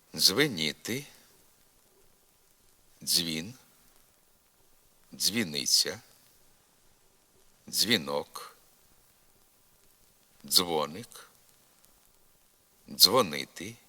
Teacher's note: переходимо до звука ДЗ приголосний ДЗ такий же злитий суцільний як і Дж твориться він так як і глухий ц але з участю голосу наводимо слова у яких на місці правописних ДЗ вимовляється один звук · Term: звук ДЗ